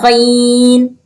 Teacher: غین کو بھی گلے میں خراش تھوڑی سی پیدا کر کے ادا کرنا ہے